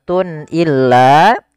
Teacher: Kemudian pada lafal Tun illa di sini ada izhar halqi yaitu suara tanwinnya harus dibaca dengan jelas karena ketemu dengan huruf hamzah dan ini kita namakan dengan izhar halqi izhar artinya jelas dari